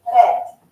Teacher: So you can hear that I am rolling that R into it, but not too much. So it's called a tapped R. · You will also notice with the Scottish accent that the R sound is more prominent. At times they tend to roll the R, not so much, but definitely maybe that one time so that you do hear it a little bit more.